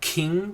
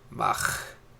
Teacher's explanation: K has a hard plosive sound to it. K, k, so it kind of takes that K sound and softens it up and puts it in the back of the throat. You're trying to kind of cut it off.